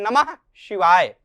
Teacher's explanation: विसर्ग का जो उच्चारण स्थान है वह कंठ है